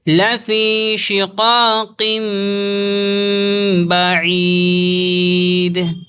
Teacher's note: دال ہے، سانس توڑیں گے، دال حروف قلقلہ میں سے ہے، تو قلقلہ کے ساتھ یہاں پر آواز کو روکیں گے